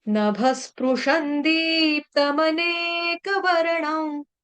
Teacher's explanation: श के ऊपर जो बिंदी है उसका उच्चारण आधा न